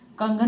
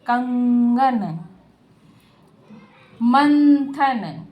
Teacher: अनुस्वार का उच्चारण हम किससे करते हैं? नासिका से करते हैं।